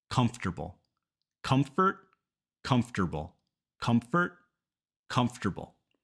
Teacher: we just skip that vowel and go right from the F to the T